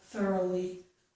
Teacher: speaking a little bit more quickly, I might not make a full O sound. I may make more like a thoroughly, but you can make a full sound, okay?